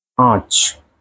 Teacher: अनुनासिक स्वर को बोलते हैं हम आ, जो आपके चंद्र बिंदु आती है ऊपर